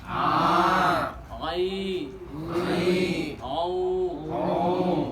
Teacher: Huruf ain keluar dari tenggorokan bagian tengah. Jadi makhrajnya makhraj halak atau wastul halqi.